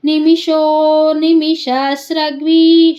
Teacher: ಶೋ ಆದಮೇಲೆ ದೀರ್ಘ ಮಾಡಬೇಕು ಪ್ಲುತಸ್ವರ ಇದೆ